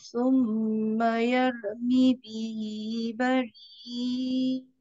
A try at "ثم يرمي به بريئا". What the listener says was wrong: Jangan, jangan tegak aja. Dia ada turun juga. Cuma turunnya jangan turun terus. Summa yaruha tafkhim. Summa yarumi bihi bari'a.